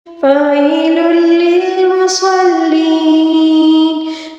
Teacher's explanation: یا مدہ کو وہ 3 الف کے برابر کھینچ کر پڑھیں گے، ٹھیک ہے؟ فَوَيْلٌ لِّلْمُصَلِّينَ الَّذِينَ هُمْ عَن صَلَاتِهِمْ سَاهُونَ۔